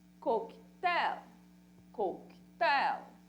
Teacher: Olha a sílaba forte no coque.